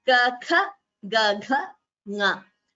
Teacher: So if you notice the second and the fourth letter while pronouncing Kha, Gha, we require more prana, that is more breath. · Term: Mahapranaha